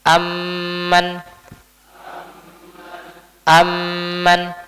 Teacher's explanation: berarti mim yang pertama dimasukkan ke huruf mim yang kedua ee diidgamkan dimasukkan ke huruf setelahnya. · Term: idgham